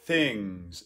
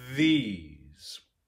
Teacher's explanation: there are two different th sounds there's an unvoiced one and a voiced one